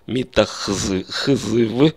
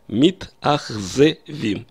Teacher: чтобы не было у нас подряд три согласных звука мы добавляем как бы разбавляем это гласным звуком